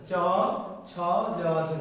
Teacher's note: তালু ও জিহ্বা, কিন্তু জিহ্বার মধ্য অংশটা চ ছ জ ঝ, জিহ্বাটা উঠে গিয়ে কি জিহ্বার মাঝের অংশটা তালুর সাথে স্পর্শ করছে